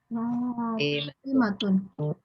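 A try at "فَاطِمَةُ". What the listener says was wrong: Fatimatu ya, nggak boleh tanwin.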